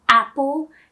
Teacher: for the word Apple you open your mouth quite wide in English